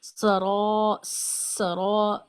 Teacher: सीन में सिटी की आवाज और र में मोटा भी और अलिफ को मद्दा की वजह से खींचना भी है। अलिफ मद्दा के बारे में हम पढ़ चुके हैं कि अलिफ मद्दा की अपनी तो खास आवाज कोई नहीं होती है लेकिन पिछले हर्फ को इस तरह खींचते हैं कि आखिर में आवाज सुनाई देती है। · سین میں سیٹی کی آواز، اور را میں موٹا بھی، اور الف کو مدہ کی وجہ سے کھینچنا بھی ہے. الف مدہ کے بارے میں ہم پڑھ چکے ہیں کہ الف مدہ کی اپنی تو خاص آواز کوئی نہیں ہوتی ہے، لیکن پچھلے حرف کو اس طرح کھینچتے ہیں کہ آخر میں آواز سنائی دیتی ہے.